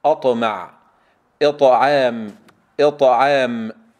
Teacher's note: المثال الأول نبدأ بحرف الطاء حال سكونها، أطمع، أطمع، نرقق الهمزة وننتبه إلى الطاء، أطأ أطأ، انتبه إلى أن الضغط يكون قويا حتى لا يخرج هواء أو نفس مع حرف الطاء، وأيضا لا نبالغ في القلقلة ونجعلها أقرب إلى الفتحة